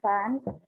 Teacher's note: Labiodental sounds are articulated using the lower lip and therefore the upper front teeth.